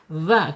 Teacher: Makhrajnya ada di ujung lidah menyentuh ujung gigi seri ya. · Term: dzal